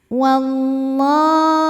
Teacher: Ma hukumnya adalah mad tabi'i muqaddar karena huruf lam berbaris fathah berdiri. Maka lam dipanjangkan 2 harokat.